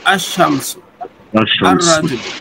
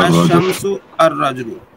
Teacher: الف لام جب ایسے لفظ پر داخل ہو جس کا پہلا حرف شمسی ہو تو الف لام، ال کا لام حرف شمسی میں مدغم ہو جاتا ہے، یعنی تلفظ کے وقت لام کے بجائے حرف شمسی ہی کا تلفظ ہوتا ہے